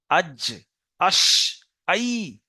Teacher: জিভের মাঝখানে চলে আসেন, মাঝখানটা উপরের তালুতে লেগে উচ্চারণ হবে জিম শিন ইয়া।